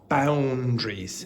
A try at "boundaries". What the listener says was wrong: Yeah, and don't pronounce that A, just eliminate it.